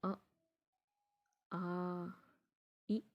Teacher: इसमें जो आप बोल रहे हैं ना, ये स्वर बोल रहे हैं ना आप, अ, आ, ई, इसमें आपकी जो आवाज़ निकल रही है ना, आवाज़ के साथ जो हवा आ रही है आपके मुंह से, वो सिर्फ और सिर्फ मुंह से आ रही है उच्चारण करने पर। तो सिर्फ और सिर्फ मुंह से जब हवा आए, तो ऐसे स्वरों के उच्चारण को हम लोग क्या कहते हैं, जी हाँ, निरानुसाक्ता।